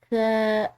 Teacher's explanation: ث یہ نرم حروف میں سے ہے، یعنی کہ اس کے ادا کرتے ہوئے سیٹی کی آواز نہ ہو